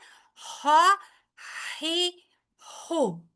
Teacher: दरमियाने हलक से अदा होगा